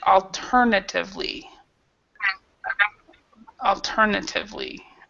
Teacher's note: so this A is more like a schwa, sounds alternatively